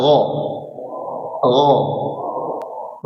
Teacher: yang di ujung tenggorokan itu adalah huruf tebal ya